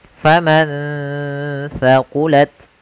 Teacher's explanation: ada nun sukun bertemu dengan huruf tha, maka nunnya disamarkan ke huruf tha. Faman thaqulat, sambil ditahan gunnahnya.